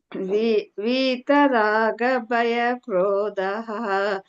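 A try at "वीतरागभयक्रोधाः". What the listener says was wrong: ಎಲ್ಲ ಕರೆಕ್ಟ್ ಬಂತು ಭಯ ಕ್ರೋಧ ಅಲ್ಲೂ ಕೂಡ ದೀರ್ಘ ಬರ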